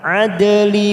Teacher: dal sukun qalqalah sugro kita pantulkan